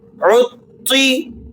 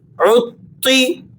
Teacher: تا کو آپ نے موٹا کر کے ادا کرنا ہے اور اس کو ہیوی پڑھنے کے ساتھ ساتھ آپ نے تھوڑا سا ہارڈ بھی پڑھنا ہے